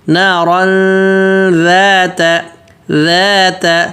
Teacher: تنوین کے بعد جو حروف آ رہا ہے ذال, وہ ذال پتلا ہے, تو غنہ بھی پتلا کریں گے. نارن ذات, ذال بالکل نرم پتلا, دونوں دانتوں کے بیچ میں زبان رکھنی ہے.